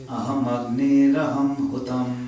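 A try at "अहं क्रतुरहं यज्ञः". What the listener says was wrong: Very nice, very nice.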